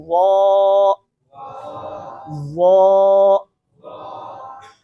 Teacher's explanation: जुबान की नोक और ऊपर वाले दांतों का किनारा, लेकिन साथ ही साथ जुबान की जड़ को उठाएंगे तो हरफ जो है वो मोटा हो जाएगा